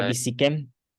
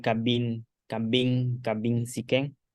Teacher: Entonces solamente se mantiene vocal consonante BI y se pierde la N. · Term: se pierde la coda